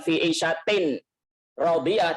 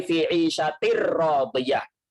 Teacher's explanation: Nunnya itu melebur ke huruf setelahnya. Idgham bila gunnah, masuk tapi tidak ada dengung. Hurufnya ada dua, lam dan ro.